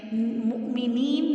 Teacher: مؤمنین میں آپ نے واو پہ حمزہ اور جزم ہے، یہاں پہ آپ جھٹکا دے کے آگے جائیں گی۔